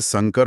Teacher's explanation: संकर पढ़ा जाए जिसमें दंत्य स है तो इसका अर्थ एकदम अलग हो जाता है।